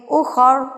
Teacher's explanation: او علی سفر فعدۃ من ایام اخر، اخر را کو ہم کیا کر دیں گے؟ ساکن کر دیں گے